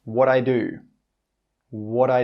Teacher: He doesn't say that final t sound. It's like he changes the t sound to a d sound, but he doesn't let the air come out at the end of the word.